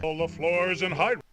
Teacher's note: it's also a very short R because the king is trying to get to the S sound.